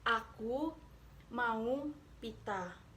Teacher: Vokal ini dibentuk dengan bagian tengah lidah agak merata dan mulut pun terbuka lebar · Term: fonem A